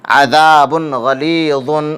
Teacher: تنوین کا اظہار حلقی ہو رہا ہے، کیونکہ تنوین کے بعد حروف اظہار میں سے غین ہے، اس لیے تنوین کا اظہار حلقی ہوگا۔ اظہار میں تنوین کو ظاہر کر کے بلا غنہ کے جلد پڑھیں گے۔ یا مدہ ہو رہی ہے، کیونکہ یا ساکن سے پہلے زیر، اس لیے یا مدہ ہوگی۔